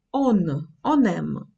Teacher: Це також є зв'язування, коли попередній носовий звук, який звучав до цього як он о, починає читатися як н